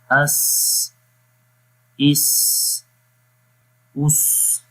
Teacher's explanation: صفت صفیر میں سی ٹی کی آواز جو ہے وہ آتی ہے